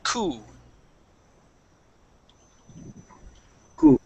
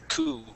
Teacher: P doesn't even exist, and we go right to that oo sound.